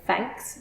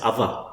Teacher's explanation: some dialects of English which have replaced or partially replaced TH with f and v